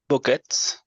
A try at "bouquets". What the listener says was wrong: Bouquets. Bouquets. Yeah, bouquets. Without T. Without T, yeah. Bouquets. Bouquets.